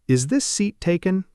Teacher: And your voice rises at the very end. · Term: rising intonation